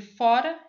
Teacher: o articulador ativo ele bate uma única vez de modo rápido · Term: vibrantes simples